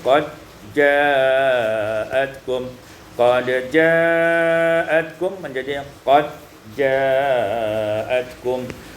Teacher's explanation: idghamud dal fil jim diidghamkan dal pada jim